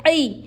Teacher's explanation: عین حلق کے بیچ کے حصے سے ادا ہوتا ہے۔ عین پر زیر ہے، نہیں کھینچیں گے۔